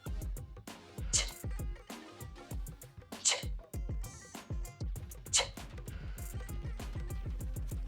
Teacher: The ch sound is made through the mouth and it's unvoiced, which means you don't use your vocal cords to make the sound. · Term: affricate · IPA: [tʃ]